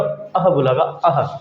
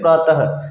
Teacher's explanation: जब हम इसको उच्चारण करेंगे तो कैसे करेंगे? प्रातः, बाद में शब्द के ह की ध्वनि आएगी। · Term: विसर्ग अयोगवाह